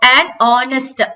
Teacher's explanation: h வந்து நம்ம sound வந்து சைலண்டா போயிடும்